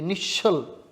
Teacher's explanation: विसर्गाच्या पुढे च किंवा छ आला तर श होणार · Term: विसर्ग संधी